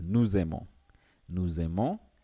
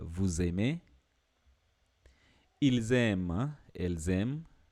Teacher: you'll tend to pronounce the S and the A, and that gives you sound z, z. So it becomes nous aimons. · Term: liaison